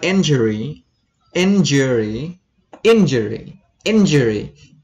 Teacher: you stay on the first syllable in injury